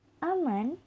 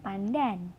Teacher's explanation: perubahan bunyi N apikoalveolar pada kata aman menjadi apikopalatal pada kata pandan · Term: asimilasi